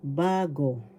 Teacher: patinig example halorin bagorin first syllable ba second syllable go bago the first syllable has the accent